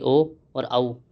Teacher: ओ दो कंठ ओष्ठो यानी ओ और औ यह कंठ और ओष्ठ होठों के द्वारा बोला जाता है